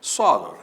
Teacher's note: paroxítona terminada em R, portanto acento nesse O inicial de soror